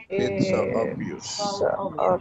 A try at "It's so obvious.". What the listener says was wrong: Very good. One more time.